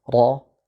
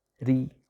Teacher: Ra kadangkala kita baca tafkhim, misalnya ketika dia berharakat fathah, ra kita baca tafkhim. Tetapi kita baca tipis ketika dia misalnya berharakat kasrah, ri kita baca tipis.